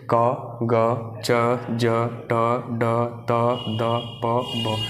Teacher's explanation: जिनका उच्चारण करते समय मुख से कम वायु निकले, है ना, उनको बोलते हैं अल्प प्राण।